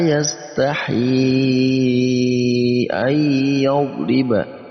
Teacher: Ada mad tabi'i, ha yang berharakat kasrah lalu bertemu dengan hamzah di lain kata, maka ini masuk juga sama mad jaiz munfasil, dibaca panjangnya 4 sampai 5 harakat